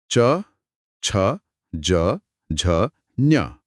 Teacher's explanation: च बोलते समय जीभ ऊपर तालू से लगती है। हाँ, मुंह की छत का मुलायम अगला हिस्सा। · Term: तालव्य